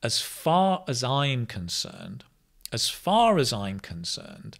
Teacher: notice the as becomes us because it's not stressed. So whenever we don't stress small words like prepositions, they become the weak form, us.